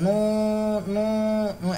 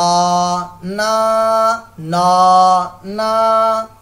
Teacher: تو منہ سے آواز نکالنی ہے، ناک سے نہیں نکالنی بھائی